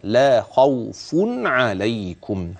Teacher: ببيان نون التنوين وصلا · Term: الاظهار